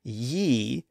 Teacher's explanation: there isn't much difference between that initial Y sound and the e sound that follows it in fact if you pause the Y sound you get ye